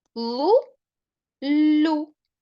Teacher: в першому випадку у нас будуть склади зі звуком у а в другому уже з звуком у але з пом'якшення